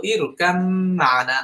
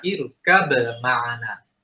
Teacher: এবং তার প্রথমটা সুকুন হয়েছে, পরবর্তীতে হারাকা হওয়ার কারণে এই বাটা মিমের সাথে যুক্ত হয়ে যাবে। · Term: মুতাজানিসান সগীর